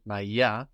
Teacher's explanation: And then maia, with the accent on the A on the end, which means yeast.